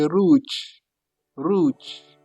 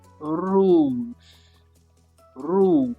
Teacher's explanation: Please, you push it from your throat. Rouge. The R comes right from your throat. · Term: French R